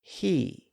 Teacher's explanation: the H sound high and if we want to say he we set our tongue to make the e sound and again we just precede that sound with a little breath he well as we know by now vowel sounds are always